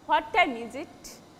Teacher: Your voice will fall at the end of the sentence.